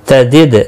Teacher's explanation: دال ساکن پر قلقلہ ہوگا